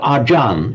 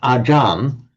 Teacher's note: The reason it comes ajan is because the a stays the same. A ch between vowels becomes a J sound.